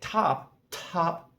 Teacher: if I say top top, the aspiration does come out and you can feel it